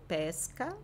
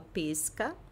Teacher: Se eu falo pesca, o E fechado, estou falando do pêssego.